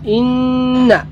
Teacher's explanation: নুন মুশাদ্দাদ ওয়াজিব গুণা হবে